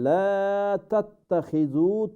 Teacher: লাটাকে লম্বা না করলে এখানে অর্থ পরিবর্তন হবে,